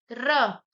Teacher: र बोलने में देखिए कितना कंपन सा हो रहा है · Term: प्रकंपित